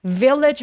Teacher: 맨 마지막에 오는 G 소리 있죠? 요렇게 G로 끝나는 단어들 정말 많은데 얘네들은 아니고 하면서 마치 CH처럼 조금 가볍게 처리해 주세요. 그러면 훨씬 더 자연스럽게 들립니다.